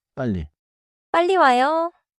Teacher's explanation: Single 리을 can sound quick, but 리을리을 is doubled and steady. · So I should not make it like a fast English R. I should hold it more like a clear L.